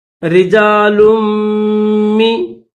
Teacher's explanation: لام کو میم کے ساتھ ملائیں گے